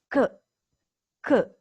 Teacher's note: while making the sound C the back of the tongue touches the back of the roof of the mouth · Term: the sound K